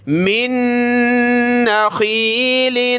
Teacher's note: پہلا نون ساکن ہے، اس کو چھوڑ دیں گے، نون مشدد کو پڑھنا ہے